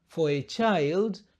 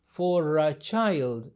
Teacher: tumeunganisha R na A